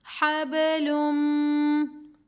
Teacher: लाम मीम दो पेश लुम, गुन्ना करेंगे, मीम मुशद्दद है। हबलुम। मीम को मीम मुशद्दद के साथ मिलाना है, मीम साकिन के साथ नहीं मिलाना।